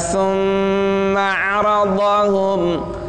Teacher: Itu mimnya harus ada gunnah. Thumma 'aradahum 'alal mala, itu panjangnya 6 harokat.